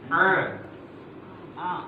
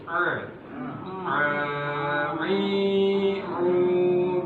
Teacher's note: Tempat keluarnya adalah wastul halqi, bagian pertengahan dari tenggorokan. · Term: huruf ain